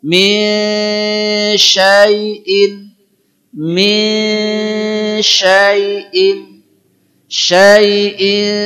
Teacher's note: ini suara en lebih dekat kepada ny